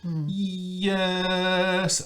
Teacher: back of the tongue is very high it's almost touching the soft palate yes you hear that there's a sort of explosion onto the